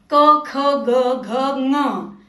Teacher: चलो पढ़ते हैं क वर्ग वाली लाइन, गले की लाइन. क, ख, ग, घ, ङ आवाजें सीधे गले से यानी थ्रोट से आती हैं